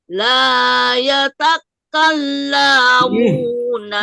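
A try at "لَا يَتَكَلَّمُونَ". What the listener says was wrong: La yatakallamu. Lamnya jangan panjang, Bu. Bu, jangan la yatakallamu. La ya kan pendek, nggak ada apa-apa.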